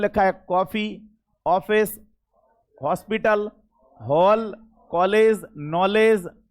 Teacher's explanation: ऐसे शब्द जिनमें ना तो ओ का प्रयोग हो रहा है ना आ का प्रयोग हो रहा है, आ और ओ के बीच की जो ध्वनि है उसको ओ बोलते हैं, कॉफी। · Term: आधे ओ वाले वर्ड